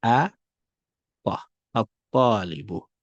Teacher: the ta has a shadda, and then the lam is neutralized or is skipped. You don't pronounce it.